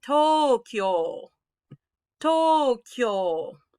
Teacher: you're probably used to saying tokyo this is actually tokyo tokyo that k and that y gets smashed together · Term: blended sound